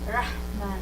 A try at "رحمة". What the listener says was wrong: Ra. Yeah, don't use the sides of the tongue. So not ra, not ra. It's ra. Yeah, rahmah.